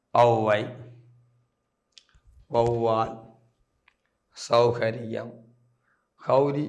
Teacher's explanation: தனக்குரிய மாத்திரை அளவிலிருந்து குறைந்து தான் ஒலிக்கும் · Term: அவகார குறுக்கம்